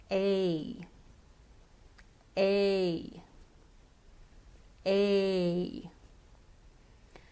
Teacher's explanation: A is a tongue vowel because here the position of the tongue changes in the enunciation of the sound. It's a diphthong because we glide from one vowel to the other.